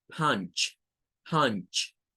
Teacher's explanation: punch, como pueden ver, suena con una AU, con un sonido entre A y U.